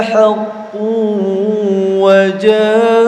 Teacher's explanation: Jangan lupa melebur disertai mendengung ya. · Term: Idgham bi ghunnah